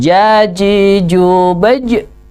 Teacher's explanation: keluar dari tengahnya lidah ya dirasakan tengahnya lidah dan langit-langit yang atas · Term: huruf Jim